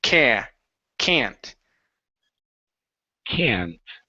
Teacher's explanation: we use more of a nasally sound when we say the word can't.